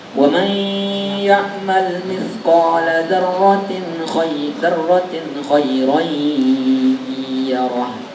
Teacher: Gunanya di hidung, 2 harokat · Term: gunnah